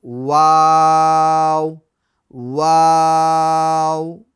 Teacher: जो वाव है ये होठों को गोल करके अदा होता है।